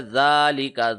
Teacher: لہٰذا وَمَن يَفْعَلْ ذَلِكَ، ذال کے اوپر کھڑی زبر ہے، ذَلِكَ، ذا کو ایک سیکنڈ لمبا کیا